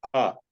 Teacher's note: A is coming out of kantha. Nothing else is touching. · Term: Kantya